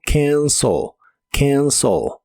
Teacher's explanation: La A se pronuncia como una combinación de los sonidos E y A, y la E del final se pronuncia como una O suave